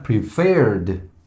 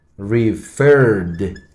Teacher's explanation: En ambos verbos, si bien es cierto, terminan en CBC y el golpe fuerte, el stressed syllable, está al final